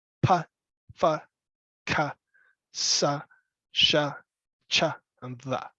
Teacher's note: sounds are made by pushing air through your mouth. No sound comes from your throat. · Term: voiceless